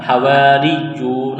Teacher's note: را کو باریک کرنا ہے، یا میں سختی کرنی ہے، واو مدہ ہے، ایک الف کے برابر کھینچنا ہے۔